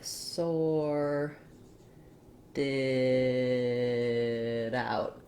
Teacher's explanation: when I link a T to the next sound starting with a vowel, it turns into a flap and it sounds a little more like a D. So sorted out kind of sounds like sorted out.